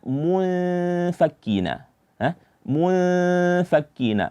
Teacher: Kemudian ada kata munfakkina, di sini ada ikhfa, yaitu samar-samar. Maka kita samar-samarkan bunyi dari huruf nun